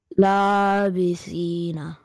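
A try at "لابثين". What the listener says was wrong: That's better.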